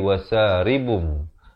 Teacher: kita tukarkan daripada bunyi Nun kepada bunyi mim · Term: hukum iqlab